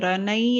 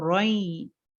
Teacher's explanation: जो तनवीन है रन, जो नून की आवाज है वो नून की आवाज को हटा देंगे, मतलब ओनली वन जबर विल बी देयर, रोई, रनई, रनई नहीं पढ़ेंगे, रोई.